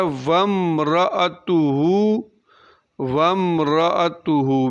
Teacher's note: آگے لفظ ہے وَامْرَأَتُهُ، وَامْرَأَتُهُ، میم کی آواز کو ظاہر کر کے پڑھیں گے، یعنی اظہار شفوی کریں گے، یہاں پر اظہار شفوی ہوگا۔